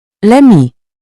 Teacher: For example, l'ami. It sounds like one smooth word. You don't pause between the L and the vowel.